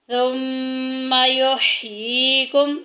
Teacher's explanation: मीम साकिन के बाद सा आ गया, सा जो के इजहार शफ़ी के ख़ानदान में से है, ज़ाहिर करके पढ़ेंगे, गुन्ना नहीं करेंगे